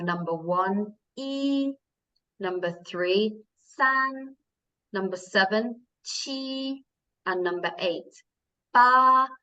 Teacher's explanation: you can hear they are high and flat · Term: first tone